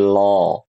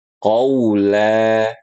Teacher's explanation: jangan dinaikkan pangkal lidahnya dan pastikan huruf la-nya bunyinya la, bukan lo.